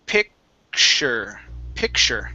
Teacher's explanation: Okay, so in this word, or typically, whenever we have the TU together like that, you guys, in a word, in the middle of a word or whatnot, the T is going to change to an SH sound